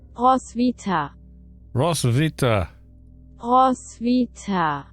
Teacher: So it's pronouncing the W like a V though, isn't it?